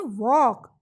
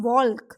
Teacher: There is no sound of L. L is silent.